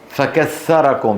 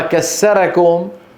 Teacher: ابدال الثاء سينا او تاء كمان هذه نفعلها بالعامي كثيرا